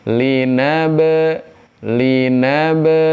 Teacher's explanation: ba mati maka hukumnya adalah qolqolah memantul